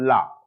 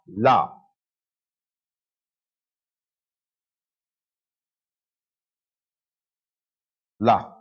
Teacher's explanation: हवा दोनों साइड से निकल रही हो बगल से निकल रही हो किनारों से निकल रही हो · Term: पाशविक व्यंजन